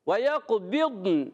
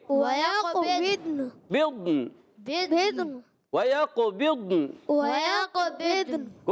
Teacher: ضاد پر زبر نہیں دینا، دود کو بھی ساکن رکھنا ہے، نون کو بھی ساکن رکھنا ہے